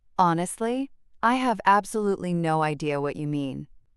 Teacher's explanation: the pause after honestly creates a moment of reflection before the admission of confusion.